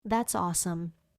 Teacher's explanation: Stress the first word of the complete phrase. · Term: Stress patterns